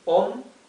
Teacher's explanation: The accent is in the third starting from the last, right?